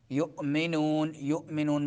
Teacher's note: یؤمنون میں جھٹکا دیں گے حمزہ کو